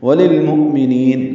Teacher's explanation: لام کو لام سے ملانا ہے، اظہار ہے ، مؤمنین، یہ حمزہ ساکن جھٹکے سے پڑھا جائے گا، نی